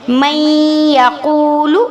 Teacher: میم کو یا کے ساتھ ملائیں گے، نون کو سکپ کر دیں گے، نون کو بیچ میں سے نہیں پڑھیں گے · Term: ادغام